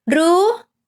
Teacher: R is high tone listen the sound again R you see the sound is going up